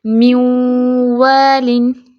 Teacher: میوالن میں نون غنہ میں جا رہا ہے، غنہ کے ساتھ نامکمل ادغام ہے، ادھورا ادغام ہے، اس کی طرح نہیں ہے کہ مم نوسن، ٹھیک ہے۔ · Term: ادغام ناقص بالغنہ